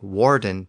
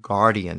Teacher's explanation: the French sometimes had a problem with that Germanic W sound at the beginning of those words and they often pronounced it with a G sound so a word like Warden became Guardian in French and a